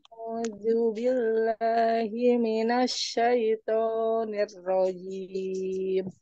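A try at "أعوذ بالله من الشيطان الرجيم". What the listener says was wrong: A'udzunya dan a'udzu, a'udzu. Sedikit du, sedikit lidahnya dikeluarkan. Du, du.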